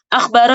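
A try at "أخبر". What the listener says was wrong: Pakai kho, bil kho, laisa bil kaf.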